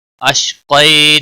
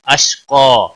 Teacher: अश्क़ई नहीं पढ़ना है, अश्क़ा अलिफ क़ा के आगे अलिफ लगेगा और हुरूफ मद्दा बनेगा, एक अलिफ के बराबर खींच कर वक़फ़ करेंगे